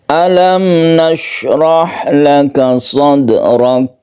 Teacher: Ronya ditebalkan atau istilahnya ro tafkhim karena berharokat fathah.